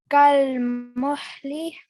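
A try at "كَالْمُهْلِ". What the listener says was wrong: So just this ha here is not pronounced from your throat. Okay, try to read this ha normally. Kal muhli.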